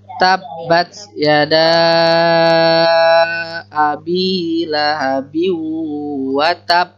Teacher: Kalau ba bertasdid itu huruf bertasdid, ba bertasdid itu ditahan.